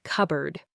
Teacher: The P sound is very often dropped in natural quick speech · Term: elision